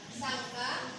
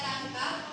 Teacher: Pelar adalah jenis bunyi konsonan yang dihasilkan dengan menghalangi aliran udara di saluran vokal dengan bagian belakang lidah menempel pada bagian lunak langit-langit mulut